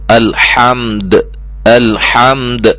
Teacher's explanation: اب یہاں ہم نے جو ہے وقف کرنا ہے تو الحمد، الحمد، ٹھیک ہے، دال کو ہم ہلا کے پڑھیں گے، ٹھیک ہے جی، ساکن کر کے اچھی طرح قلقلہ کے ساتھ ادا کیا جائے گا، ہلا کر جنبش کے ساتھ